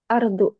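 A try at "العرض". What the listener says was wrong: al-ardu. Bukan do ya. Du.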